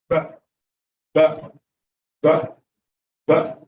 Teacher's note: Two Lips just pressed against each other no folding no circulating no none of that